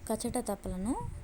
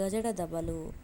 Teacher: కచట తపలు పరుషాలు, కఠినంగా పలికేవి. గజడ దబలు సరళాలు, తేలికగా పలికేవి.